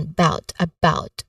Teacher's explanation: The second syllable is the stressed one